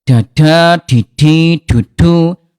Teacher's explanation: huruf dal dari segi udara dia jahar, tidak keluar udara. Bunda ya, da jadi du tidak ada udara.